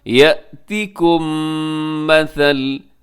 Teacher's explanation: یأتیکم مثل، یأتیکم میں میم ساکن ہے اور میم ساکن کے بعد میم آیا، جیسے ابھی کچھ دیر پہلے آپ کو بتایا کہ میم ساکن کے بعد اگر میم آ جائے تو وہاں پہ ادغام ہوتا ہے اور ادغام شفوی اس کو کہا جاتا ہے۔